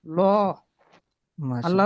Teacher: আল্লাহ লামে মোসাদ্দাতের পূর্বে জবর আছে, তাই আল্লাহ লামকে পুর করে পড়তে হবে